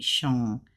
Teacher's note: You don't really pronounce that G. I don't hear that G.